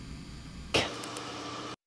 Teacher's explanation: Concurrent with the acoustic gap, a morphodynamic gap is clearly visible because exhalation is stopped. Frame 327. 10 milliseconds later, the burst of the consonant k becomes detectable on the oscillogram, far right. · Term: voiceless occlusive k